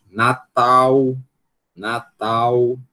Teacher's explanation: O L em posição de final de sílaba, ele vai virar eh ele vai virar um U